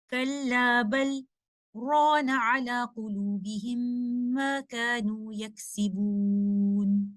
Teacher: हम बल के बाद सख्त करेंगे और उसके बाद आयत का आगाज नई सांस लिए बगैर करेंगे। और चूंकि यहाँ पर भी सख्त साकिन लाम और रॉ को मिलने से रोकता है, इसीलिए यहाँ पर लाम साकिना का इदगाम नहीं होगा, बल्कि हम उसको इजहार के साथ इस तरह से पढ़ेंगे, कल्ला बल रॉन अला कुलूबिहिम मा कानू यक्सिबून। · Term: सख्तुल वाजिब